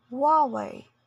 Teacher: When it comes to Huawei, both accents pronounce it as Huawei with a stress in the first syllable